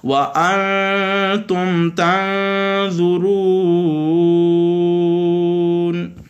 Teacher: اور تنظرون یہ یہاں پہ آخر میں واو مدہ تھا، لیکن تنظرون یہاں پہ وقف کریں گے، نون کے اوپر جو زبر تھی اس کو عارضی طور پر ہٹا دیں گے، تو یہاں پہ مد عارضہ بن جائے گی. اس کو ایک الف دو الف تین الف تک کھینچ کے پڑھنا جائز ہے.